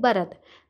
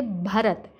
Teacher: आवाज़ आप लोगों ने थोड़ी मोटी करके भारी आवाज़ में बोलना है, क्योंकि जिस बे के नीचे 4 नुक्ते होते हैं वो बे जो होता है वो भारी अल्फाज में शुमार हो जाता है।